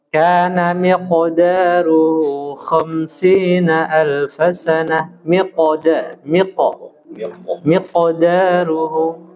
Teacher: qalqalah pada huruf qaf itu tafkhim tebal